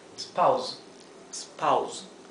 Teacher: La s final suena vibrada. Z, como el zumbido de una abeja. Z. Spouse.